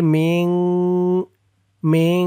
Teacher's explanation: এখানে গুন্না হবে, ইকফা গুন্না